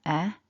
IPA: e